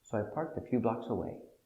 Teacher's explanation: the intonation goes down at the end for a positive statement